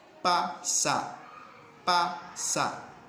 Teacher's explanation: Vean cómo al pronunciarla sus labios se juntan completamente. Además es oclusivo. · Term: bilabial